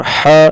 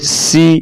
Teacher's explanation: ح گلے سے، سین سیٹی کی آواز